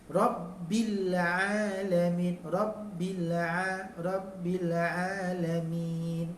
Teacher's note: Pada atas dia tebal, tafkhim. Tafkhim tu tebal. Dan sabdu pada ba.